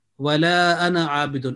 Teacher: So the word ana abidun continues, that alif will be ignored in the pronunciation.